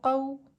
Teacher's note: واو لین کو 1.5 حرکت کی مقدار دیر لگا کر نرمی کے ساتھ پڑھتے ہیں، جیسے قاف واو زبر قو۔